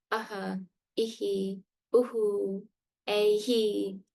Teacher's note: The Visarga is this two dots next to a vowel, and it is a release of breath. So whatever the preceding vowels, the vowel sound preceding it is, we replicate or echo that sound.